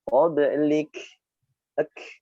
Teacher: Karena waqaf pada huruf kaf, maka hamasnya terdengar jelas.